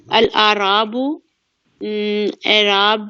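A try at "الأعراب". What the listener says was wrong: یہ اعراب نہیں ہے، یہ آراب ہے. ہمیشہ آپ لوگ اعراب کو آراب کہتے ہیں.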